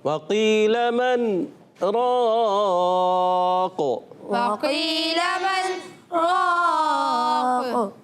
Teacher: قاف کو اور بھی پر کرنا ہے، تھوڑا سا اور خاص خیال رکھنا ہے، اور قلقلہ بھی کرنا ہے